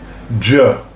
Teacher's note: The third sound, the J, is when we add a D to the SH sound, and it changes the tone.